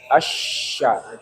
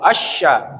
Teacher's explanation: sifatnya adalah tafasyi. Nanti kita belajar tafasi ertinya udarnya harus menyebar